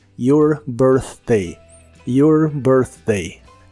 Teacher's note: la th de Birthday es la th suave de inglés que suena solo como aire